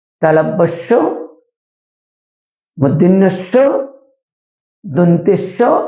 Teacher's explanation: এই বর্ণগুলো উচ্চারণ করার সময় শীষ দেওয়ার মতো একটা আওয়াজ সৃষ্টি হয় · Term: শীষ ধ্বনি